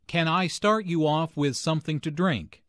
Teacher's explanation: since this is a yes/no question the intonation Rises at the end